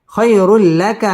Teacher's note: ইদগামে বেলা গুন্না গুন্না ছাড়া পড়তে হবে